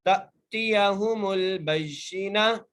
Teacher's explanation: تأتیہم البینہ، با کو یا سے مضبوطی سے ملانا ہے، یا کے نیچے زیر ہے، نون کے اوپر زبر ہے، آگے جو ہے تا لکھا ہوا ہے، ہم اس تا کو وقف کی صورت میں ہا میں تبدیل کریں گے